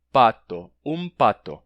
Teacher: Agora, a nasal é pronunciada tocando os lábios, já em preparação para o P que vem depois. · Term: assimilação